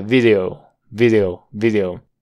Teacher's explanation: Esa d es una flap una d rápida